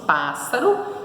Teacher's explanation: a sílaba tônica está no PA então é a última penúltima antepenúltima né paroxítonas Quais são as · a sílaba tônica na antepenúltima sílaba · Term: proparoxítona